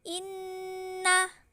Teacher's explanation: nun bertanda tasydid dan cara membacanya dengan dengung serta ditahan 3 harokat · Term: gunnah